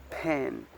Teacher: The voicing is voiceless. Voiceless because the oral cord don't vibrate, and the place of articulation is bilabial. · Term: p sounds